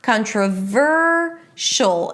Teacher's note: You know that the primary stress should be before the suffix. So it's the VUR - 'kan-tr'-VUR-sh'l'.